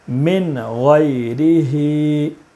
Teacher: نون ساکن کے بعد حروف حلقی کے 6 حرفوں میں سے غین ہے، اس لیے نون ساکن کو بغیر غنہ کے جلدی پڑھیں گے